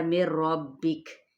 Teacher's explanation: نون ساکن کے بعد را آ رہا ہے تو یہاں پہ ادغام بلا غنہ کا قاعدہ